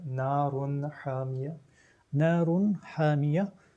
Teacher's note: Donc, Ha fait partie de cette famille appelée Huruf al-Idhar. Donc, on n'a pas d'intonation nasale soutenue. On manifeste clairement la lettre Ha. Donc, ça, c'est la règle qu'on appelle Idhar.